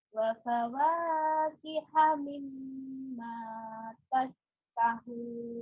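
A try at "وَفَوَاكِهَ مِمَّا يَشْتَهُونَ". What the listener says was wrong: Titik dua di atas apa di bawah itu? Suaranya hampir hilang. Yashtahun ya. Wa fawaki hamim ma yashtahun. Kiha, enggak ada ta, itu kiha, enggak ada ta.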